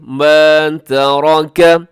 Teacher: را جو ہے یہ موٹی ہے کیونکہ را کے اوپر حرکت ہے، باقی تا بھی باریک ہے اور کاف بھی باریک ہے۔